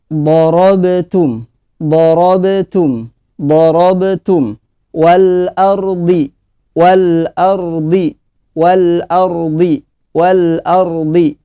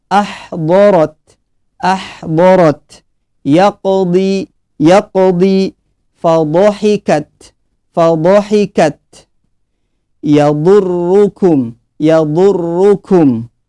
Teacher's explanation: huruf dhad itu tempatnya di sisi lidah bertemu geraham atas